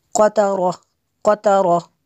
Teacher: قاف کو بھی پر کرنا ہے اور را کو بھی پر کرنا ہے